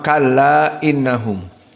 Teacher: mad jaiz munfasil dalam keadaan al-qasr, hanya 2